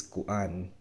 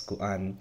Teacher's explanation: Well, in Cebuano, the filler word we say is kuan, which, again, you see the two vowels, right? That means there's a glottal stop in between, so you have to pronounce each of those vowels, kuan. And you'll hear examples, and people will say things like kuan, And we also use the your typical ahs and the uhs, the that kind of stuff too.